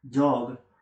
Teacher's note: place the tongue in the same position as a ter but as d is a voiced sound she should make the vocal chords vibrate during its pronunciation